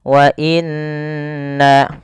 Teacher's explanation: Pada lafal bacaan wa inna pertama ini ada yang nun berharakat tasydid harus ditahan suara nunnya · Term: gunah